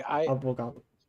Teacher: the V sound is more with the lips, and even more so with the lips when it's in between two vowels